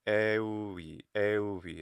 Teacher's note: I do some fricativization there with the euvi. So euvi, euvi, not euvi, euvi.